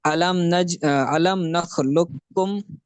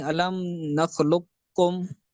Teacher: علم نخلقکم، یہ جو ہے وہ باریک پڑھا، اور اگر پر پڑھیں علم نخلقکم تو یہ اس طرح ہو جائے گا۔ ٹھیک ہے، ادغام تام ہوگا تو پھر کاف کو باریک پڑھیں گے، اور ادغام ناقص ہوگا تو جو ہے وہ قاف کو موٹا پڑھیں گے